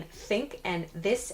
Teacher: your tongue kind of sticks out between your teeth. But it's not such a big motion actually. So it's not like you have to be really dramatic with how much you stick your tongue out, like th. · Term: TH sound